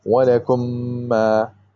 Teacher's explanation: you basically join the first meme into the second meme. You don't say walakum ma, you don't pronounce two of them separately, but you say walakum ma.